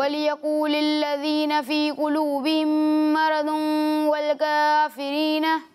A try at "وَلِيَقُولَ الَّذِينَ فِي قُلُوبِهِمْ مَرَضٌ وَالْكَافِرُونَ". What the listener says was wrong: دیکھیں آپ نے بہت ساری غلطیاں کی اسے پڑھنے میں ٹھیک ہے وَلِيَقُولِي نہیں ہے پہلے تو ٹھیک ہے وَلِيَقُولَ الَّذِينَ ٹھیک ہے دال میں سیٹی کی آواز نہیں آئے گی ٹھیک ہے اور اس کے بعد مَرَضٌ را کو بھی پر پڑھنا ہے ضاد کو بھی پر پڑھنا ہے ٹھیک ہے یہاں پر بھی غنہ ہے اور اس کے آخر میں بھی غنہ ہے ٹھیک ہے دونوں جگہ